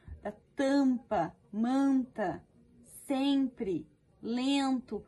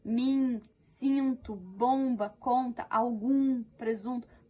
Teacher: Todos estes, pessoal, eles têm um som apenas, tá? Eles são nasais, eles saem com o som como se fosse a vogalzinha com o tio em cima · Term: som nasal